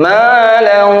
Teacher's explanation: Jadi suaranya tanwin masuk ke wawu, kemudian tambah gunnah. Gunnah itu suara yang keluar dari rongga hidung, ya. Kemudian ditahan 2 sampai 3 harokat, maksimal 3, minimal 2. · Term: idgham bi gunnah